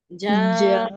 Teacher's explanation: जिम के बाद जो अलिफ आया, अलिफ पर ऊपर मद लगी, इसलिए हम क्या कर रहे हैं, अलिफ को खींच रहे हैं।